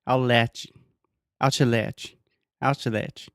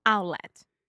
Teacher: So you're almost making a T sound. Your tongue, everything is in position to make the T sound, and then you just don't quite do it. Your throat stops you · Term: glottal T